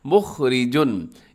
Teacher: इसमें रा बारीक है, खा मोटा पढ़ा जाएगा